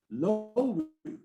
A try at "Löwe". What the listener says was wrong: Actually, it's difficult in German because the two little points on the O means that you say Löwe. Löwe.